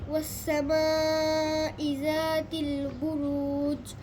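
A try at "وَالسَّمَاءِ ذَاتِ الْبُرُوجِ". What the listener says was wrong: এই বুরুজ শব্দটা লাস্টে জিম, এটা কি হবে? এটা কিসের হরফ? কলকলা হরফ। তাহলে এটা কি কলকলা উচ্চারণ করো? বুরুজ।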